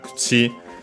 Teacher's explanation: the u of ku is barely heard if at all because it's between unvoiced consonants